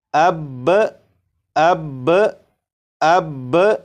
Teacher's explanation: وقف کی صورت میں با کے اوپر جو زبر ہے، زبر کو نہیں پڑھیں گے، صرف تشدید کو پڑھیں گے۔ تو وقف میں اسے اس طرح پڑھیں گے جیسے اب اب اب۔